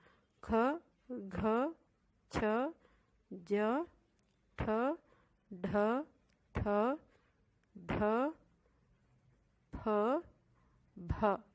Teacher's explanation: ಎರಡು ಮಾತ್ರಾಕಾಲ ಅಥವಾ ಹೆಚ್ಚು ಉಸಿರಿನಿಂದ ಉಚ್ಚಾರ ಮಾಡಲಾಗುವ ಅಕ್ಷರಗಳು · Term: ಮಹಾಪ್ರಾಣ ಅಕ್ಷರಗಳು